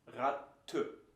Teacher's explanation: this is what we call the Schwa, a very weak E at the end of a word.